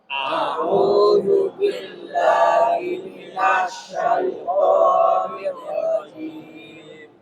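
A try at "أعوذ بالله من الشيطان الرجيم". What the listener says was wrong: Syai, jangan syai ya, syai. Ya. Bis, perhatikan, sin itu ada sifatnya yang disebut dengan sofir. Sofir itu berdesis.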